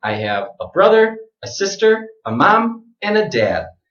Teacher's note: so all of the items in the list go up except for it to last